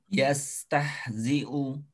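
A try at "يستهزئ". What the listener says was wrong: Ya.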